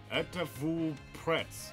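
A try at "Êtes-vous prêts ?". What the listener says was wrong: You don't pronounce S's in French.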